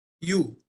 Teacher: से शुरू होता है और हिंदी में लिख दिया आप तो यू करते समय मुह गोलाकार बना ओठ गोला आकृति में बनता